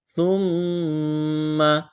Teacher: میم مشدد پر غنہ کریں گے، آواز ناک میں چھپائیں گے